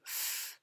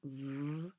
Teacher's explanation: You don't feel any vibration, so it's an unvoiced sound. You're doing the same exact motion with your mouth when you make the V sound, V, except now you can feel the vibration in your throat. So you're turning on your voice box to go from the sound F to the sound V.